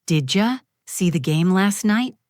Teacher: did you often becomes didja